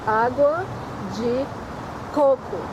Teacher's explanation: you have to put the emphasis on the First Co